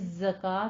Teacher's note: زائی کے اوپر سیٹی کی آواز بھی آئے گی اور اس کو آپ نے تشدید بھی ادا کرنی ہے